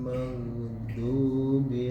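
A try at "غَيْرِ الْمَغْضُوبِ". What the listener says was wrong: du. Do. Kalau membaca do dimulai dari ujung lidah, maka nggak ketemu sifatnya. Do kan. Tapi dimulai dari sini Pak. Tempelkan lidah, tepi lidah bagian kanan atau bagian kiri, salah satu nggak apa-apa. Ditempelkan ke geraham. Bo.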